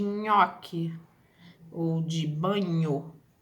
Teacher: E temos o palatal, que é o Nhan, né, de nhoque ou de banho